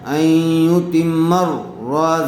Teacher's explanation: دیکھیے میم کے اوپر تشدید ہے، اس لیے تا کو میم سے ملا دیں گے، اور چونکہ میم سے اگلے والے حرف را کے اوپر پھر تشدید ہے، اس لیے میم کو را سے ملا دیں گے، این غنہ ہوگا۔